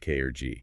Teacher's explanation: You have a velar consonant made in the back of the throat like K or G.